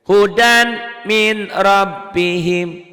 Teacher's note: nih dibacanya kesini NY melebur masuk ke m hoedam tuh ya Bunyi n-nya berubah jadi m melebur melebur masuk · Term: Idgham Bighunnah